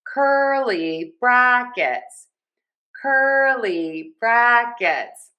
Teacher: For curly brackets, we have a great stress pattern here. Stress, unstressed, stress, unstressed. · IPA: /ˈkɝ.li ˌbræk.ɪts/